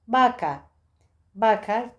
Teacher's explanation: Türkçedeki b sesine çok yakın. B ile V arası diyebiliriz. Daha çok B sesine yakın.